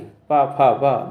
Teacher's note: और ता वर्ग दांतों को टच करती है वायु, तभी यानी कि दांतों को टच करते हुए, जीभ देखना दांतों से टच होगी, ता था दा, तो जो वायु है दांतों से टकराती हुई जाएगी, इसलिए इसको दंत बोलते हैं, दंत वर्ण बोलते हैं। और पा वर्ग में दोनों के ओंठों को आप टच करे बिना ये वर्ण नहीं बोल पाएंगे। पा फा वा दोनों को टच करेंगे ओंठों को, तभी बोल पाएंगे।